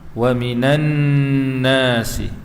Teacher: Nun yang bersabdu wajib al-ghunnah ya, wajib dengung dua harakat.